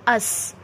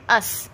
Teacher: अस में क्या हो रहा है कि मेरी जो ज़ुबान है वो ऊपर और नीचे की जो दो दांत हैं, यानी ऊपर नीचे के टोटल 4 दांत या जो नीचे वाले 2 दांत हैं इसके किनारों पे जाकर लग रही है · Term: सीन का मखरज